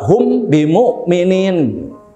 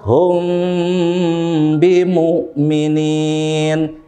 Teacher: Mimnya yang disamarkan. Jadi tidak begitu jelas ya huruf mimnya. Jadi nggak dibaca hum bimu'minin. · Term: ikhfa syafawi